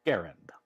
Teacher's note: Massachusetts and the section of the letter he is enclosed says an initial G hard as in go first a short as in Harry second a somewhat more obscure as in errand Accent on the first syllable